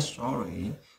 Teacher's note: Chúng ta nhớ trọng âm là âm đầu tiên nhé, sorry. Từ này chúng ta phải nói rất nhiều trong cuộc đời của mình, đó là xin lỗi, bởi vì chúng ta rất dễ phạm lỗi trong cuộc sống mà, đúng không?